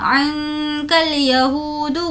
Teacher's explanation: ہو کو کھینچیں گے واو مدہ